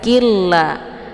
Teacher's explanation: Jadi lafdzul jalalahnya dibaca tipis, ya, karena sebelum lafdzul jalalah berharakat kisrah yaitu qi.